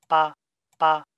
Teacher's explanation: So the voice onset time for this stop is 40 milliseconds.